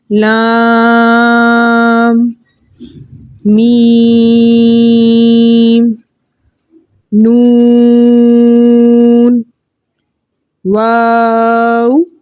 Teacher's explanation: لام جو ہے بڑی مد کے ساتھ آ رہا ہے، اس لیے 5 الف کی مقدار کھینچ کر پڑھا جائے گا